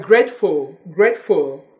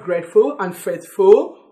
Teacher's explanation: You don't say faithful or grateful. T's are swallowed in the pronunciation of those words.